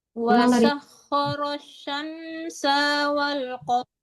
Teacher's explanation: Wasah, tipiskan sinnya, jangan wasyah. jangan wasyah tapi wasah.